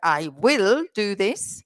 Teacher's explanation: German speakers of English, they have something similar in their own language, which is like will, and they often pronounce it completely. They don't contract it. They say, I will do this.